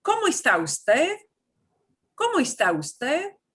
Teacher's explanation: And you want it to sound like a question. So, watch how your voice fluctuates up and down.